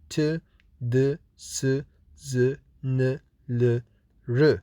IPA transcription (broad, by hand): t, d, s, z, n, l